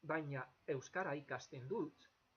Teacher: You'll notice that the G before the E there, it's not pronounced anything like the Spanish G. It's like an English G all the time. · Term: hard G